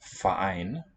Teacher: Voiceless F and then a syllabic R, it's the prefix, and the root ein with a glottal stop initial.